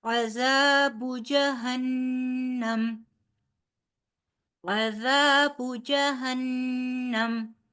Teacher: ذا نرمی سے ادا ہوگا، ساتھ دو حرف برابر کھینچ کر پڑھا جائے گا ، زال کیونکہ اس کے آگے الف مدہ ہے، عذاب جہنم،